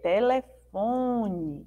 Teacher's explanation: esse esse final aí é com ela com ele telefone né Tem um som do I mas a gente escreve no final com a letra é telefone